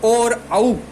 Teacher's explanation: कंठोष्टम कंठ से ए होता है, होठ जो है उनसे ऊ होता है, दोनों से मिलकर के ओ बनता है, तो इसलिए कंठोष्ठ से ओ और औ ये दोनों उच्चारित होंगे, बोले जाएंगे